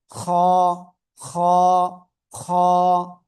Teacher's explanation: জিহ্বার গোড়ার কাছাকাছি গলার শেষ ভাগ থেকে এই অক্ষরটা মোটা আওয়াজে উচ্চারিত হয়।